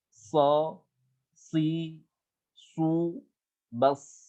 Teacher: So, bibir kita nggak kita tarik. Lidah kita keangkat, so. Bibir kita nggak kita tarik. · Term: sod